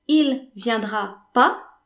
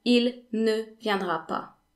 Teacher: in the spoken version of the language, you would omit the ne altogether in most cases